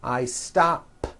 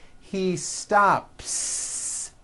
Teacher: I stop ends with an unvoiced P.